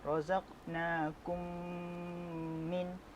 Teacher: mim mati berjumpa dengan mim adalah idgham mithlain, dibaca dengung 2 harakat